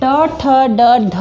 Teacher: अगर आप ट ठ ड ढ बोलोगे तो आपकी जीवा एक आर्च जैसी जगह पर लगेगा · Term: मुर्धा, मूर्धा